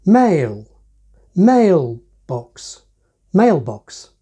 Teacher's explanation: in a compound like mailbox mail gets the accent as if it were the end of the phrase